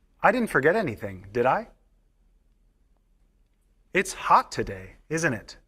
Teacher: notice that the first part of the sentence always has falling intonation